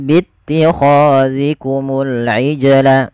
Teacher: Cara membacanya, suara mimnya harus ditahan, tidak sebagaimana izhar yang tidak boleh ditahan suara mimnya. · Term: ikhfa syafawi